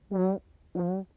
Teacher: For the W sound, the lips are in a tight circle and the back part of the tongue lifts.